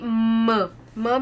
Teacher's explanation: म में थोड़ा सा नेजल आता है, नेजल ममर आता है